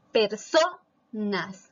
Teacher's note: Mayor fuerza de voz en so, que es la penúltima sílaba. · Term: palabra grave